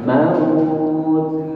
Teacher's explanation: kalau Hamis itu keluar udara tapi suaranya itu tidak begitu jelas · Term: Hames